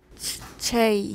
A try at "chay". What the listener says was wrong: Yeah, perfect, perfect. It's exactly what we want.